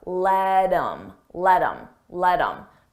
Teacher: I take that H off of him I drop the sound and then I'm left with M but I combine it with the word before